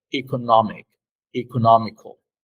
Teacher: the stress in both is in the part nomic